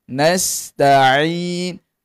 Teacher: Dan sepanjang empat harakatin tadi tidak jadi sengau. Dan pada huruf nun di hujung sekali mesti ada satu harakat ghunnah. Bunyi n jangan lama sangat nanti jadi bunyi bunyi seumpama kita berhenti dengan nun sabdu.